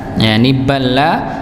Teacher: lam yang pertama sukun, lam yang kedua fathah, bertemu huruf yang sama, maka dibaca ya idgham, masuk langsung, masuk baknya langsung masuk ke lam kedua.